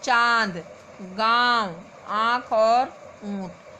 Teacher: अनुनासिक का बिंदु वर्ण के ऊपर लगाया जाता है, जिसे अनुनासिक कहते हैं। अनुनासिक वाले वर्णों के उच्चारण में हवा नाक और मुंह दोनों से बाहर निकलती है।